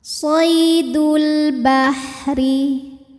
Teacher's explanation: cara baca alif lam qamariyah Alif lamnya dibaca dengan jelas atau disebut dengan izhar qomari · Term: alif lam qamariah